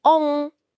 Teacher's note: Masuk akal? Terus konsonan M di belakangnya bakal naik ke rongga hidung dan berubah jadi bunyi sengau eng. Makanya di Nusantara, kata Om itu secara organik bergeser jadi ong.